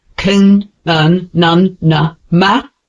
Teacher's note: These sounds are made with air passing through your nose. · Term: nasal sounds